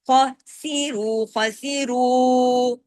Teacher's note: را پھر ہیوی ہو گیا، کیوں؟ پیش کی وجہ سے